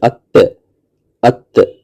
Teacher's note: आवाज जो है ऊपर के दांतों के पीछे जबान की नोक पर जाकर रुकती है। · آواز جو ہے اوپر کے دانتوں کے پیچھے زبان کی نوک پر جا کر رکتی ہے، ات ات، دانتوں کے پیچھے اوپر اور زبان کی نوک پر جا کر رکے گی، تو تے کا مخرج وہی جگہ ہے۔ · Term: ते का मखज